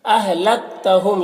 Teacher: میم ساکن کے بعد میم ہے، تو میم کو میم سے ملا کر غنہ کے ساتھ پڑھیں گے. اس کو ادغام شفوی کہتے ہیں.